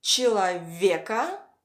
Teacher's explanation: the stress falls on е